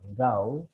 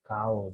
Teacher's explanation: bunyi keh dengan geh itu adalah satu segmen, satu bunyi voice dan satu voiceless